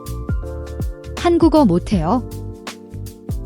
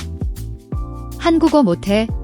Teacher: The T is unreleased, meaning your tongue touches the roof of your mouth but you don't fully release the T sound. It's a stop, not an explosive T.